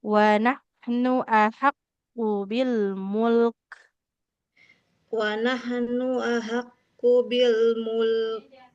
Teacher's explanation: Nah, jadi huruf nah huruf apa? Huruf kafnya harus mengalirkan nafas